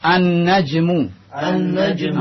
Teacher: Alif lamnya lamnya masuk ke dalam huruf setelahnya melebur sehingga lamnya tidak terlihat jelas lagi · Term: asyamsiyah